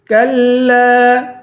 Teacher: کلا، چھوٹا کاف ہے، کاف کو لام سے ملا کر سختی کے ساتھ جمع کے پڑھیں گے اور لام کے بعد الف ہے، الف حرف مدہ ہے اور اس پر مد ہے.